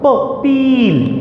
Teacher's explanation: P is a bilabial. When you close your lips hard and you push air forward in your mouth, you produce the sound p.